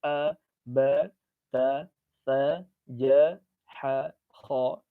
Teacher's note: Maka tidak ada getaran di bagian hidung kita. Kenapa? Karena memang udaranya dia tidak keluar melalui rongga hidung.